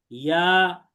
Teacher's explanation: জিহ্বার মধ্যখান তার বরাবর উপরের তালুর সঙ্গে লাগিয়ে উচ্চারিত হয়।